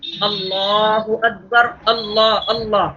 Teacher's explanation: اللہ کا لام پر ہو رہا ہے، موٹی آواز سے پڑھا جا رہا ہے قدرتی طور پر